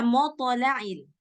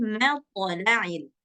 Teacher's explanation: Tapi tetap mim tetap tipis, yang tebal huruf to doang.